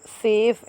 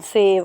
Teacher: F जो है वो voiceless है जबकि V जो है वो voiced है। अब देखें एफ जब आप प्रोड्यूस करेंगे एफ़ को तो आपको पता चलेगा कि आपका लोअर लिप और अपर टीथ जो है वो एक दूसरे के साथ प्रेस हो रहा है।